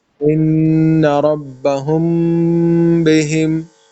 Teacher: میم کے بعد جب با آ جائے، ہم نے پڑھا تھا غنہ کرنا ہے